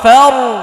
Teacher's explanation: ফায়ের মাখরাজ হচ্ছে নিচের ঠোঁটের পেট উপরের সামনে, উপরের দুই দাঁতের আগায় লাগাতে হবে, নিচের ঠোঁটটা একটু প্রয়োজন বোধে হাতে একটু ধাক্কা দিয়ে একটু ভিতরে নিতে হবে, যদি আপনার না যায়।